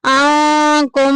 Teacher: عفونا عنکم من بعد، آنکم میں دیکھیں نون ساکن کے بعد کاف آ گیا، جو کہ اخفا کی فیملی میں سے ہے، چھپائیں گے